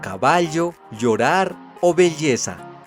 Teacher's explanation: clásico, pero emergente en varios dialectos romances, entre ellos el castellano, conocido como el sonido aproximante lateral palatal sonoro y propio de palabras como caballo, llorar o belleza